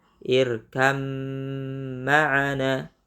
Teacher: Tidak boleh kita baca irkab ma'ana, tapi masuk ke mim, bukan ke ba.